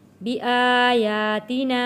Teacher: کھڑی زبر کو بھی ایک الف کے برابر کھینچ کر پڑھنا ہے۔